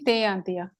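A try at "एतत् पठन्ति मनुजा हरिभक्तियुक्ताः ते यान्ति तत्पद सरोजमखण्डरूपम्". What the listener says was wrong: There is a visarga there. Te yanti tatpad saroja makhanda roopam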